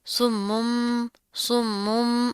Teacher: تشدید بھی ہے، میم کے اوپر غنہ کریں گے